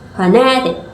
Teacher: The primary stress is on the second syllable, phonetic, giving the word its main emphasis.